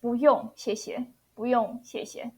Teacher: In this one, 不用 it shows fourth tone 不 but I pronounce as 不 second tone